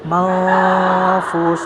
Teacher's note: Nil mafush, nun mati bertemu dengan fa adalah ikhfa, maka dia harus bukan n tapi ng atau bukan n tapi mafus, didekatkan ke makhraj huruf fa, yaitu ujung gigi seri atas bertemu dengan bibir bawah bagian dalam.